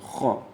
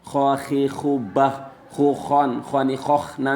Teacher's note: kha dibaca pada pangkal tenggorokan